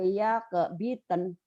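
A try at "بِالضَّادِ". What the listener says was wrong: Bildon, bukan bitten, bildon, dod. Do kan, wayak bildon.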